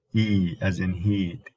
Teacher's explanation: the e sound we described as high front why because the tongue goes up and goes forward towards the alpha leverage so call it high front that's in